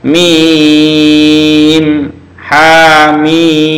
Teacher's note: Nah, bukan hama bacanya, tapi hamim. Mimnya 6 harokat.